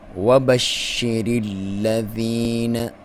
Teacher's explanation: وَبَشِّرِ الَّذِينَ، واو کو ہونٹوں کی گولائی سے ادا کریں گے، با کو باریک، شین کو باریک، شین پہ شد ہے، شین مشدد ہے، اس کو آپ دبا کے پڑھیں گے، اور جب پڑھیں گے تو منہ میں آواز پھیل جائے گی۔